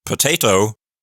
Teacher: in the word potato, the emphasis or stress is on the second syllable.